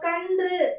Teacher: மேல்வாய் ஜா உடைய நடுப்பகுதியை போய் தொடாம கொஞ்சம் பிரண்ட்ல முன்பகுதியை வந்து தொடும் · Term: ரன்னகரம்